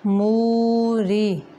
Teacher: مو نہیں کرنا، موری را باریک ہے